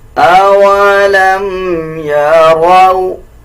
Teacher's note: را کو پر یعنی موٹا پڑھا جائے گا